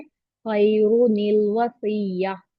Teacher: तो यहाँ रॉ को मैंने हैवी पढ़ा बिकॉज ये दम्मा के साथ है।